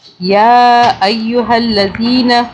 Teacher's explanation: یہ چھوٹی مدہ ہے، 3 الف کے برابر کھینچا